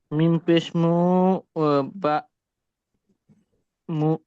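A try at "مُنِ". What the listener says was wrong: উপরে নুকতে হলে কি বা হয় না নুন হয়?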